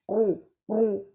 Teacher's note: منہ بھر کے آنا آواز